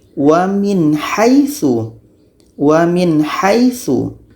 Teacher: Nun harus jelas, ha pun harus jelas dan tidak ada dengung.